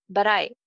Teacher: T ke baad vowel sound hai, so it becomes flap T.